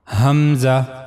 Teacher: for pronouncing hamza you have to use the lower part of your throat.